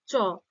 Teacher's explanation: জীবটা উপরে তালুতে দন্তমূল মানে পুরোটাই একটা ঘর্ষণ লাগছে তাই না হয়ে তারপর বের হচ্ছে চ পুরোটা লাগছে তো সেজন্যই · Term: ঘৃষ্ট ব্যঞ্জন ধ্বনি